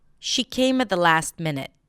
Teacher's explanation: What was the stressed word? She came at the last minute. Minute. Length, pitch, volume.